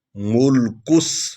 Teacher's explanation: کاف کو سین میں ملائیں گے